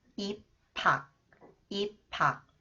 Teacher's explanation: when 히읗 comes after the final consonant 비읍, it combines with 히읗. It is read P sound.